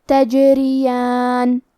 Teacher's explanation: کلمت تجریان میں حرف الجیم پہ جزم ہے، لہذا ہمیں جیم کو قلقلہ سے پڑھنا ہے، اور قلقلہ کا معنی ہے حرف ساکن کو ہلانا، تو ہم حرف الجیم کو ہلاتے ہوئے یہ کلمہ کو پڑھیں گے تجریان۔